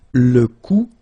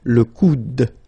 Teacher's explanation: remember you don't insist on this final e, it only gives you the sound of d at the end